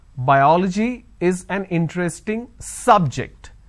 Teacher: biology is an interesting subject i'm stressing on the first syllable so i say bio biology is an interesting subject i'm i'm